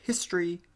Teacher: in the word history it's pretty clear that the O has been completely silenced